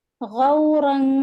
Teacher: मा उकुम गौरन, गौरन गौफ गैन दम्मा sorry गैन फतहा वाव सुकून गौ, और रॉ फतहतैन, आगे में फा आ रहा है इख्फा में से लेटर फा, तो उसको ये हाइड करेंगे, तनवीन के नून साकिन को है ना छुपाएंगे, और यहाँ पर 2 हरकत लंबा करेंगे।